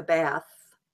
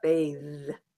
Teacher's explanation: Used to bathe, used to take a bath, but bathe. So it goes from an unvoiced to a voiced TH for the verb.